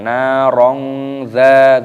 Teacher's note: Narong dha fathah tanwin bertemu dengan huruf dal, ini hukumnya dibaca ikhfa, disamarkan.